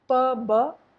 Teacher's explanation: P-b, one is voiced and one is voiceless. P is voiceless, b is voiced.